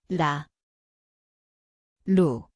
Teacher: Tempatnya adalah hujung lidah, ketukan ringan